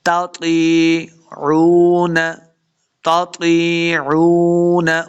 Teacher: واو مدہ ہے، دو حرکات لمع کریں گے